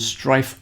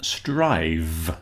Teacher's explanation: So all of these words have a F changing to a V. So the F is the unvoiced version. The VV the V sound is the voiced version of the F. So there's a a correspondence there.